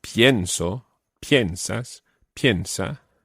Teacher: pienso, piensas, piensa, the stress is on the first syllable